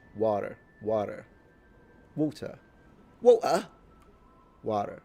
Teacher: The soft D. The T transformed into a soft D is called flapping.